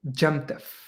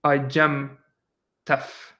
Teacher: Similar way, Gem, the iota will get lost because you want to squash things. So you actually have the T and then you have the F. So it would be Gemtef.